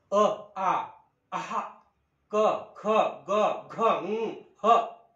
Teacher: यांची निर्मिती होते बघा मुख्य विवर विवृत्त करायचं आणि कंठातून म्हणजे हवा फुफ्फुसातून त्या कंठाला स्पर्श करते आणि बाहेर येते · ग घ तुम्ही ज्या वेळेला हे उच्चार करून बघणार त्यावेळेला त्या कंठाच्या पडजिबेच्या शेजारी जो कंठ आहे तिथे पॉईंट आऊट झाल्यासारखं वाटते